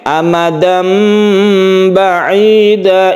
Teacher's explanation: tanwin berubah menjadi mim mati suaranya menjadi m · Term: iqlab